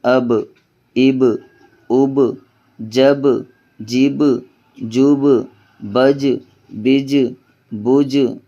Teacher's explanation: جیم حروف قلقلہ میں سے ہے، ان کی آواز ٹکر کھا کے واپس آئے گی